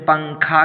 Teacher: تنوین یا نون ساکن کے بعد حروف اخفا آئے تو نون کی آواز کو ناک میں چھپا کر پڑھنا چاہیے، نوک زبان تالو سے ہٹا کر